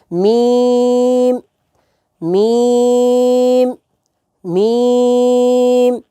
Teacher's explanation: یہ دونوں ہونٹوں کے خشک حصے سے ادا ہوتا ہے، خشک حصے سے۔